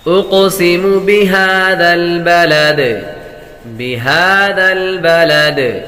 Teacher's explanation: جب وقف کریں گے دال ساکن ہو جائے گی اور دال حروف قلقلہ میں سے ہے, اور جب حروف قلقلہ ساکن ہوں تو ان میں خوب قلقلہ ظاہر ہوگا.